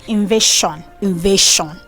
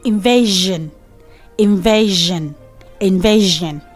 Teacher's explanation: Okay, so when we have ION at the end of a word and there's letter S before the ION, people mispronounce that S as sh instead of saying j